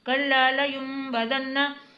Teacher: जब भी नून साकिन के बाद बा आता है तो नून छोटी मीम में बदल जाता है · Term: इक़लाब का कायदा